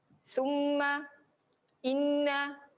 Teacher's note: Sebab kenapa mim dengan nun ni dia banyak keluar melalui hidung. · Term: dengung